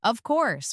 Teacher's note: when they are certain, their voice goes down strongly. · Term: intonation